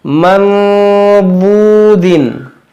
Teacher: हम यहाँ इख़्फ़ा करेंगे और यह वाव मद्दाह है, वाव साकिन से पहले एक पेश है , हम इसे खींचेंगे